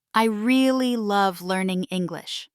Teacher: The word really is stressed, which conveys that the speaker feels strongly about learning English. If you don't mimic this stress pattern, your speech may sound less convincing or emotionally neutral.